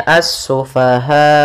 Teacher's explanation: dimatikan hamzahnya dengan sifat jahar dan syiddahnya hamzah, yaitu tertahannya nafas dan tertahannya suara